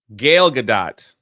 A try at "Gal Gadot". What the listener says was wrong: No, is Gal Gadot. It certainly ain't Gale. Where the fuck are you getting Gale from? There's not an I in between the A and the L. There's not an E at the end. Where the fuck do you come with Gale?